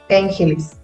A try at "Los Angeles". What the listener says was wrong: It's in English. it's not Spanish.